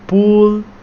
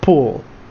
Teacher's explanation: the long and short version of the U sound